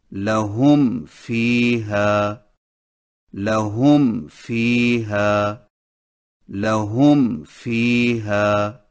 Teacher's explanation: اور جب میم کے بعد فا ہو تو ہونٹوں کے خشک حصوں کو ملانے کے فوراً ہی بعد ثنائے اولیہ کا کنارہ نچلے ہونٹ کے اندرونی حصہ پر لگا کر فا کو ادا کریں. لہم فیہا لہم فیہا لہم فیہا.